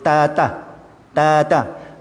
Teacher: ada sikit angin keluar, ada rasa angin, hembusan angin tu, maka itu pun sudah betul lah maksudnya. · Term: huruf ta